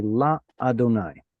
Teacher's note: When you read it, I heard you say La Adonai. A lot of people like to put a pause right there because Adonai starts with an aleph, that glottal stop. But remember, aleph at the end of a syllable.